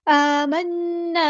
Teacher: आमन्ना यहाँ पर भी मद असली होगी, नून पे हम गुन्ना ज़मानी करेंगे, एक अलिफ के बराबर रुकेंगे, नून तशदीद वाला है।